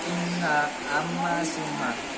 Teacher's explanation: hukum nun dan mim apabila ia bertasydid. Hukumnya itu ialah kita harus menampakkan dengungan tersebut